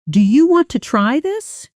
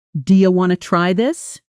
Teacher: Listen to how want to often becomes wanna in fast, casual speech. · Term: connected speech